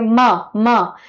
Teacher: म में क्या हो रहा है? मेरे लिप्स क्लोज हो रहे हैं।